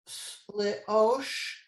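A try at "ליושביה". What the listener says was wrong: Don't forget the yud. Leyosh.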